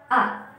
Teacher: Ketika kita membacakan ataupun membunyikan huruf A, hamzah, ada getaran di dada.